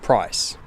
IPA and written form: pɹɒɪs (price)